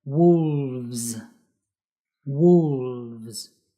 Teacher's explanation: we need to use the slightly vibrating V, the V, and the yes sound like a buzzing Z sound.